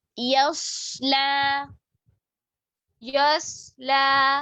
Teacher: यस्ला, यस्ला, लाम मोटा नहीं करेंगे। देखिए, या बारीक, सौत मोटा, लाम बिल्कुल बारीक